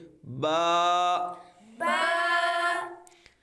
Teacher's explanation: ये हरफे शफ विया है यह दोनों होठों के तर हिस्सा से अदा होता है · با کو بے نہیں پڑھنا۔ با یہ حروف شفویہ ہے، یہ دونوں ہونٹوں کے تر حصہ سے ادا ہوتا ہے · یہ دونوں ہونٹوں کے تر حصہ سے ادا ہوتا ہے، تو اس کو بے نہیں پڑھنا بلکہ کیا پڑھیں گے؟